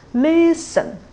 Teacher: You will definitely know li is stressed and sin is not stressed. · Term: stressed syllables